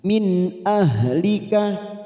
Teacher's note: nun sukun bertemu Hamzah kita baca jelas tanpa mendengung · Ha sukun makhrajnya di bawah tengkorokan · Min ahlika ha sukun ya, ha sukun makhrajnya di bawah tenggorokan, hati-hati membaca jangan sampai terdengar ha. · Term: idhar halq